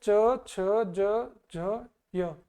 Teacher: च परिवार की तो अपनी जो जीभ है वो तालू की तरफ टच होती है।